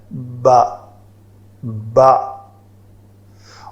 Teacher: تو با کے بارے میں ہے کہ ہونٹو کا جو تر حصہ ہے اس سے با ادا ہوتا ہے